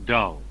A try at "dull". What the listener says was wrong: Dull, not dole. D-U-double-L.